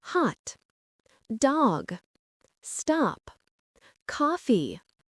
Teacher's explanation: In American English, this is often an open O sound. Your mouth is open and your tongue is low. It's not a rounded O like in go.